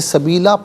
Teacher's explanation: दो ज़बर की तनवीन वक़फ़ में अलिफ से चेंज हो जाती है तो इसे सबीला पढ़ेंगे।